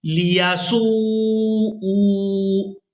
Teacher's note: اب یہاں پر آپ لوگ حمزہ کے اوپر الٹا پیش دیکھ رہے ہیں، اس کی آواز اس طرح سے ادا کی جائے گی، لِيَسُوءُوا، حمزہ الٹا پیش او، لِيَسُوءُوا وُجُوهَكُمْ، حمزہ کو کھینچ کر ادا کریں گے الٹا پیش کی وجہ سے